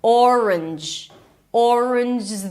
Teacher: You bring the tongue up for the N, and then you close it with a J. So, you technically you're doing something like this with your tongue. · you have two Rs here. Or an R, a schwah, and the n sound. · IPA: ˈɔrənʤ